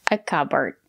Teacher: It's a two-syllable word. The stress is on the first syllable.